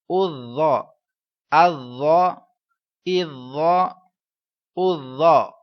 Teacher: ذا جو ہے یہ حروف مستعلیہ ہے، لہٰذا اس کو پورا آواز میں پڑھیں گے۔ اس کے بعد اس کو بتائیں گے زا کی طرح ذا پر اس طرح کی آواز نہیں آنی چاہیے، کیونکہ ذا حروف صفیریہ نہیں ہے تو سیٹی جیسی آواز نہیں آئے گی۔